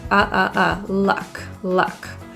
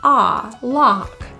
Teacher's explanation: The word luck has a very neutral vowel with jaw slightly closed, lips are neutral.